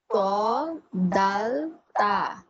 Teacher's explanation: জিব্বার আগা প্লাস উপরের দাঁতের গুড়া, জিব্বার আগাটা আমার উপরের দাঁতের যে গুড়ি আছে সেখানে লাগবে